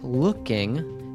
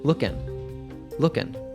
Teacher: You might have noticed before that with words ending in ing, we often drop the G sound.